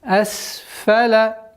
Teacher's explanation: Удержание на син немножко, так как свистящий звук. Асфаля. Сафилин.